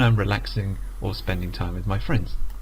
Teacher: on friends it goes down because that's the last item in the list